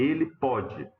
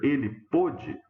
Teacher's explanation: Na fala, o que diferencia uma versão da outra, uma ocorrência da outra? O fato de que em um dos casos o O é aberto, no outro é fechado.